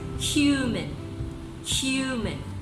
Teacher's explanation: So it begins with a stress, then followed by unstressed syllable. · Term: trochee